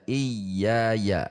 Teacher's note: iya dua harokat mad tabi'i, tidak boleh terlalu panjang karena kalau terlalu panjang itu sebuah lahan, sehingga dua kali saja iya ya, seperti itu panjangnya.